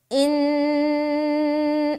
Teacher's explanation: نون میں ہماری آواز ناک میں رکے گی، ایک الف کی مقدار۔ فَإِن، جو روک رہے ہیں نا، یہ ہو رہا ہے غنہ۔